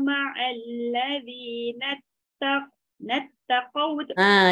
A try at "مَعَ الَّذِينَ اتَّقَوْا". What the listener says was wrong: Dekat qaf jangan lekat. Sebab dekat qaf tak ada sabdu. Ma'alladhina taqaw.